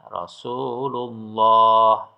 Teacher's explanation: Aslinya Rasulullahi. Kalau diwaqaf atau berhenti dibaca Rasulullah.